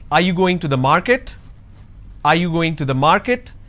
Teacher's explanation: Now, are you going to the is flat. Are you going to the market? This is going up, because the last word denotes like it's a question. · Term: rising tone